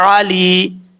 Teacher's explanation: یا مدہ ہے لام کے بعد، 1 الف کی مقدار اس کو لمبا کریں گے